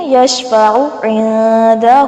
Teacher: عین کو لمبا نہیں کرنا، یشفعو نہیں بنا دینا، یشفع عندہ، یہاں پر نون پر اخفا کیا جائے گا